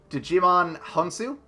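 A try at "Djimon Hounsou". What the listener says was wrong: I'm pretty sure the D is silent.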